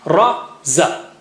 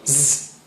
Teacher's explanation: Ra, you see, ra doesn't have strong airflow. Zzz, strong airflow.